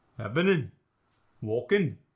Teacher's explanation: Most of the time, you're going to drop the G at the end of words.